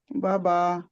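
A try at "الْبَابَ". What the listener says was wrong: नहीं, बाबा नहीं है, बाबा। पहली बा जो है उसके आगे अलीफ है तो इसका मतलब है मद है, उसे खींचना है 2 हरूफ के बराबर, 2 काउंट यानी के 2 हरकत के बराबर।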